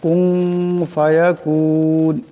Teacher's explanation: নুন সাকিনের উপরে ফা আসছে, ফা ইকফার হরফ, এখানেও ইকফার একালি পরিমাণ গুণ্য হবে